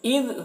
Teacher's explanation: اذ دال میں کو باریکی کے ساتھ ادا کریں گے اور دال میں خیال رکھنا ہے کہ قلقلہ نہ ہونے پائے